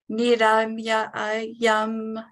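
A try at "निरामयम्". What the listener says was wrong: Yeah, not too many yums, okay? Only one yum. Niramayam, okay?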